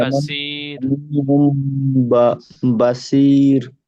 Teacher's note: র সাকিনের ডান দিকে জের এসেছে, তাই রকে বারিক করে পড়তে হবে। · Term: র বারিক